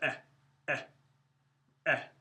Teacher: It's not an A, it's O. And the shortest vowel of all is the shava, which makes just a eh. It's very short. In fact, sometimes it's silent.